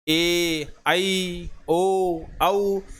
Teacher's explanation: जिनके उच्चारण में ह्रस्व स्वर से अधिक समय लगता है यह दीर्घ स्वर कहलाते हैं या द्विमात्रिक स्वर कहलाते हैं।